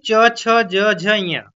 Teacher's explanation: च छ ज झ ञ आदि का उच्चारण किसमें होता है। तो यह आपका तालव्य से होता है